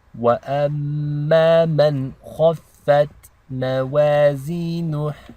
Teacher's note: the noon is not read with ghunna because it's followed by a kha, which is one of the letters of the throat. So this is called izhar.